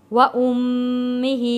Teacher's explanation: میم تشدید والا ہے، تشدید والے میم پر ہم نے غنہ ادا کرنا ہے، اور ہا کے نیچے کھڑی زیر ہے، 1 الف کے برابر ہم کھینچ کر پڑھیں گے۔